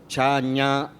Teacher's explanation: We say that ta, da are dental because I put the tip of the tongue back of my teeth. I say the cha, nya are palatal because my tongue goes up